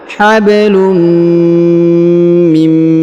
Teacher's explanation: huruf nun sukun bertemu dengan mim maka Nun sukunnya menghilang melebur ke huruf mim ya tidak dibaca lagi huruf nunnya huruf nun sukunnya tidak dibaca · ditahan dan ditekan lalu didengungkan 2 harokat